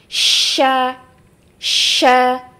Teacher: Jadi dia ee suara itu terkumpul ya tafasyinya terkumpul di dalam mulut dan satu-satunya sifat tafasyi yang dimiliki oleh huruf hijaiyah adalah huruf syin